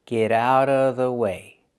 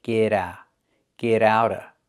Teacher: the T in get changes to a fast D because it's between vowels